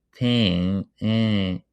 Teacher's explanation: if you produce the word tank and you don't produce the last part nek, you will hear that your vowel is what we call nasalized, meaning that the airflow is going through nose, not only mouth. So you will hear that tang is nasal, right?